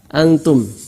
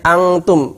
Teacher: Harusnya persiapan ta, antum, bukan angtum. Kalau angtum dia persiapan qaf dan kaf.